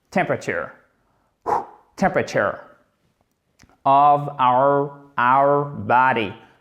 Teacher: Vous accentuez la première syllabe et c'est comme si tout le reste du mot, littéralement, s'écroulait. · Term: accent tonique